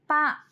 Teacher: శ్వాసము అల్ప ప్రాణము ఉభయోష్ట స్పర్శం